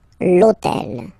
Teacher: in French we don't pronounce H, okay, so basically the first sound of the word is the vowel O , okay, so for the same reason, needs to disappear, l'hôtel,